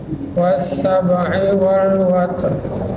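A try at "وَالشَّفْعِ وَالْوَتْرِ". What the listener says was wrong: Pakai sya Bu, wasyaf'i.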